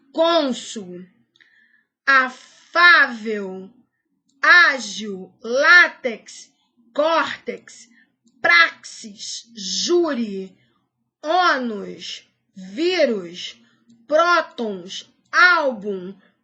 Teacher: paroxítonas ou aquelas cuja sílaba tônica é localizada na penúltima sílaba